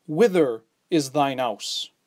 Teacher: than thy because the word following begins with an h and hes were silent so it actually begins with the vowel